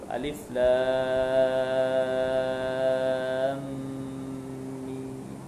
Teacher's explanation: Ada contoh mahlazin harfi tu huruf-huruf muqatta'ah kan, alif lam mim, pasal mim tu mim mati situ, jadi dia dengunglah dua harakat tu situ